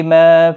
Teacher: ما الف مدہ ہے، ایک الف کی مقدار کے برابر کھینچیں گے